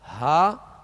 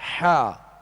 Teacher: ہا جو ہے وہ ابتدائی حلق سے، اور حا جو ہے درمیانی حلق سے ادا ہوتا ہے. اور ان میں فرق جو ہے یہی ہے جو آپ آواز کو محسوس کر رہے ہیں، ہا اور حا، ہا حا، یہ فرق ہے ان کے اندر.